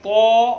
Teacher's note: طا میں جو ہے منہ بھر کر کے اس کو ہم ادا کریں گے تاکہ یہ پر پڑھا جا سکے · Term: موٹا